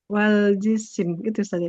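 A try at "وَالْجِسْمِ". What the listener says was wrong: jisim. Sinnya bukan kasroh, jism. Nah, bukan jisim ya.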